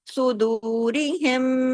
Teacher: میم ساکن کے بعد میم مشدد ہے، تو یہاں پہ غنہ بھی ہوگا ، بڑا غنہ اکمل میم کی وجہ سے، صدورہم، اس طریقے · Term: ادغام شفوی